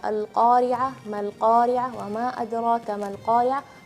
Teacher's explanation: qafnya tebal yaitu memiliki sifat isti'la dan tidak bergerak bibirnya. Al-Qari'ah bukan Al-Qari'ah tapi Al-Qari'ah. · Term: huruf qaf